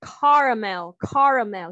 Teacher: the second syllable is going to have a schwa sound, and that final syllable is where you might hear a different pronunciation. People might say caramel, and that mul caramel, okay, caramel is that third syllable, or you might hear people say caramel.